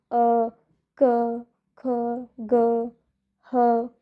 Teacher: तो डायरेक्टली हमारे गले से उच्चारण हो रहा है उनका। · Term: कंठ